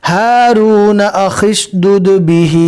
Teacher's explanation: ملا کر پڑھیں گے تو خو کو شین سے ملائیں گے